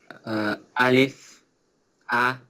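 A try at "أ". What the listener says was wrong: Yeah, Alif is not, there is Hamza, right? A, and also feel the sound of Hamza is coming from the bottom of the throat.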